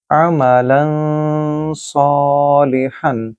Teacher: میں نے غنہ کیا کیونکہ تنوین کے فوراً بعد صاد ہے جو کہ حروف اخفا میں سے ہے